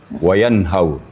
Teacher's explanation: nun sukun bertemu ha kita ketahui bahwa itu adalah ee izhar Hakiki